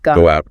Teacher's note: Go out. Links with that W sound.